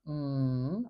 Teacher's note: M where we use two lips and the air sneaks out our nose